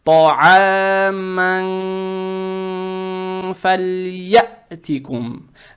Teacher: в данном случае, танвин надо произносить скрыто, удерживая через нос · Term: ихфа